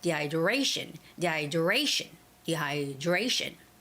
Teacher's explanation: dehydration dehydration our a has the stress so what do three it's the third syllable stress